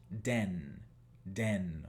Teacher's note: Fíjense que yo no saco entre los dientes la lengua para hacer el sonido de D. Eso lo hacemos en español, no en inglés.